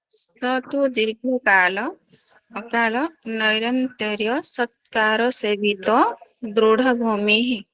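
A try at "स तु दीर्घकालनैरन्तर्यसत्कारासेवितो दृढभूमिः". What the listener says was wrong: Good.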